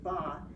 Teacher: So ba is voiced. So voicing starts right away at 0.